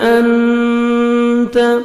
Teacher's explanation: نون ساکن کے بعد 15 لیٹرز میں سے تا ہے، آپ نے نوز میں ساؤنڈ لے کے جانا ہے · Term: اخفا